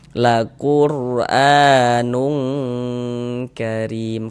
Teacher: Kemudian didengungkan. Jadi bagian nunnya itu suaranya itu kita tahan ya. Kita panjangkan sejenak · cara membaca ikhfa itu tadi dibaca samar dan berdengung · Di sini kan tanwin. Jadi bunyi tanwinnya dibaca samar.